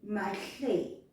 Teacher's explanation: We just drop the A, that at the beginning, and we say Mahle.